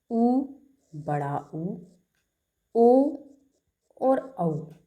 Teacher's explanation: जिन वर्णों की उच्चारण करते वक्त मुंह का आकार जो है वो वृत्ताकार हो जाए, मतलब गोलाकार हो जाए, तो वे स्वर या वर्ण वृत्ताकार स्वर कहलाते हैं।